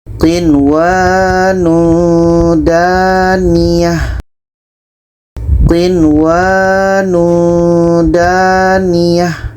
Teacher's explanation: Nun jelas, waw jelas, tidak ada dengung. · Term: izhar wajib